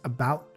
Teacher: some people they say the T here at the end of the sentence sometimes you might not hear it